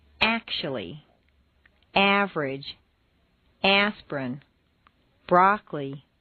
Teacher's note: syllables intonation can also completely get rid of certain entire syllables some longer words that are stressed on the first syllable squeeze weak syllables right out